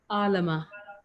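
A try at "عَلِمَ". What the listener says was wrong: Alima, yeah, that's correct. Alima is correct. It should be Alima, but if you wrote Alama, I'll accept it because it's a fatah mistake which you've done there.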